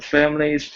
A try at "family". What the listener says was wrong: let's try and smooth out your L a little bit on the word family.